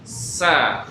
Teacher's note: Ini tempat keluarnya ujung lidah kita bertemu dengan ujung gigi sari bagian bawah ya. Sa ya. Sa dia sifat karakter dia udara keluar, suara juga harus keluar. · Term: sin